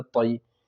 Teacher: لین، یا ساکن سے پہلے زبر ہو تو یا لین ہوگا، یا لین کو نرم آواز کے ساتھ جلدی پڑھیں گے